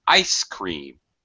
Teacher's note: When we have a compound noun, we use we put the stress on the first word or the main syllable of the first word, primary stress, and that which is high pitch, and then low pitch on the second word